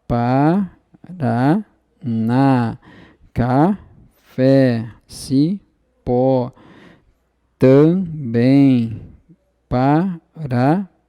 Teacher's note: são oxítonas, porque a sílaba tônica da palavra é justamente a última, e são oxítonas terminadas em uma dessas letrinhas aqui, tá?